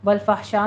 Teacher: वल फहशा में भी इसी तरह से फ़हा नहीं कहना, हा को साकिन ही रहने देना है, वस्ते हलक में ले जाके आवाज़ को स्टॉप करना है